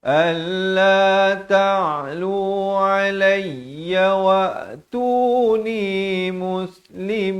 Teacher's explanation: Kemudian alla ta'lu, ain, jelaskan ain di pertengahan kerongkong